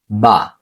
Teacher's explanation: দুই ঠোঁটের বিজা অংশ থেকে কি উচ্চারিত হয়